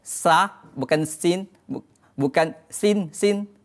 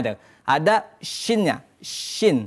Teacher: tafasyi itu adalah angin yang berhamburan ketika menuturkan huruf syin